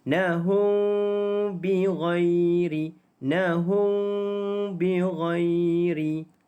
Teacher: Mim mati bertemu dengan ba, maka dipanggil sebagai ikhfa syafawi. Itu kita dengung dengan kadar 2 harakat. Nahum bi. Dengan kadar kita buka sedikit bibir mulut kita.